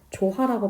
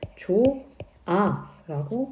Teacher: 그러면 조하가 돼야 되는데 조하라고 발음하지 않고 우리는 조아라고 발음을 한다는 거죠. 멀쩡히 있던 히읗이 사라졌으니까 히읗 탈락 현상